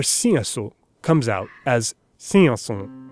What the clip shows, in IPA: sĩəso s̃ĩə̃s̃õ